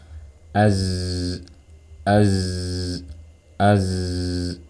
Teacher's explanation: saat dalam keadaan sukun sifat rakah menjadi lebih jelas jadi kita alirkan suaranya Az Az Az ya tidak boleh mati seperti ini suaranya Az